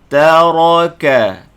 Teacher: Taraka, ta nipis, ra ni tebal, baca ra ni bagi atas tebal, kaf ni nipis.